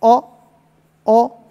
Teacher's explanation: इन दोनों को बोलेंगे तो पहले मुंह बंद होगा और उसको खोलेंगे आधे पर लाकर छोड़ देंगे